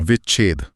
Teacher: स्वर से सीधे छ पर जाने में जो गैप आता है उसे भरने के लिए बीच में आधा च अपने आप आ जाता है। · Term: च का आगम